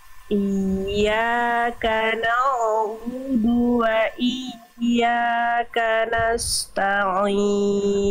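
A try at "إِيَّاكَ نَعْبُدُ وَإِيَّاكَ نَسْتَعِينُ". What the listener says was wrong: Oke, jangan na'a, tapi na dialirkan sedikit suara tidak memantul. Iyyaka na'budu wa iyyaka nasta'in.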